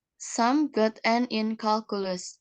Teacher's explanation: beginning with a medium pitch and ending with a lower one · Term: simple assertion